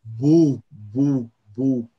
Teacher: Aunque la B es una consonante y la U es una vocal, ambos segmentos comparten el rasgo labial. Son muy labiales.